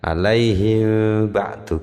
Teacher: bacaan mim mati ketemu ba itu tidak mingkem tapi diikhfakkan